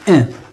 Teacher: lorsqu'on fait la prononciation de cette voyelle, on fait sortir la voix par le nez. Donc, il se prononce à travers le nez et non pas les lèvres. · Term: un nasal